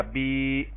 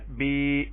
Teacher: یا ساکن سے پہلے زیر کو یا مدہ کہیں گے اور اس کو ایک الف کے برابر لمبا کریں گے